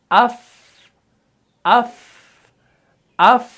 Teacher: ہوا جو ہے نا وہ آپ کے ہاتھ سے ٹکرا رہی ہے تو اس کے اندر صفت حمز ہے · دیکھیں اس کے اندر پستی ہے لیکن ایئر فلو جو ہے وہ بھی پاس ہو رہا ہے، سانس جاری رہتا ہے، سانس جاری رہتا ہے، اس کے بغیر یہ حرف ادا نہیں ہوگا۔